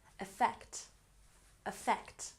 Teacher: Effect has emphasis on the second syllable.